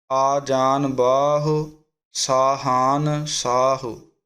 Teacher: ਅਤੇ ਅੱਗੇ ਹੈ ਬਾਹੁ, ਬੱਬੇ ਦਾ ਕੰਨਾ ਵਧਾ ਕੇ ਹਾਹੇ ਔਂਕੜ 'ਤੇ ਆਵਾਜ਼ ਛੱਡ ਦੇਣੀ